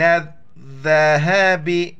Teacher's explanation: ذال کے وقت زبان باہر نکالنا ہے